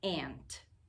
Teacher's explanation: this is the nasal sound, so it gets a little bit tricky to hear that beginning sound because it gets pushed right through your nose.